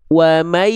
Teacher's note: ketika ditutup suaranya stabil, nggak berubah, maka dia nggak masuk hidung tandanya